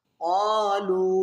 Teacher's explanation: क़ालू लाम वाव मद पेश लू, यहाँ तीन अलिफ मद है, इसको तीन अलिफ की मिक़दार खींचा जाएगा